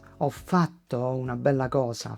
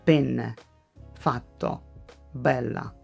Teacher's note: You do not need to attack the consonant. Just hold it for a bit. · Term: double consonants